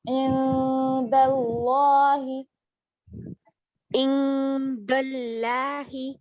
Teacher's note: اخفا ایک الف کے برابر. ناک میں آواز ایک الف.